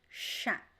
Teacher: The CH in Portuguese sounds like sh, the SH, always, no exception, okay? So the CH sounds like sh.